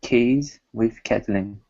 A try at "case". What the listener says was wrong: Okay, so instead of saying case with a Z sound, it's case with an unvoiced S. Case.